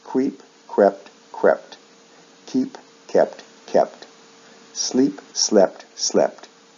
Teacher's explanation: Notice the sound shifts again. Verbs like keep shift vowel sounds in the past and past participle, usually from long E to short E